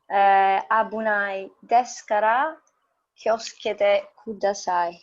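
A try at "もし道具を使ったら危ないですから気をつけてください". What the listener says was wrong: So you pronounced it really cleanly and clearly.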